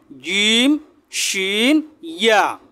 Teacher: জিহ্বার মধ্যখান থেকে এই 3টি হরফ শক্ত করে জিম শিন ইয়া।